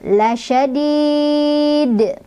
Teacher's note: dalnya punya hukum qalqalah kubro atau qalqalah besar karena dalnya sukunnya karena berhenti.